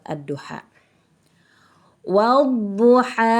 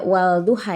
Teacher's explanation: tapi Alif lamnya tidak dibaca langsung dimasukkan ke dalam huruf Dod huruf Dod itu adalah huruf Syamsiah maka ini hukum bacaan nya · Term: alif lam syamsiyah